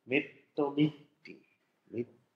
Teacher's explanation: das geschlossene E, wird also zu I geschlossen, weil danach wieder ein I kommt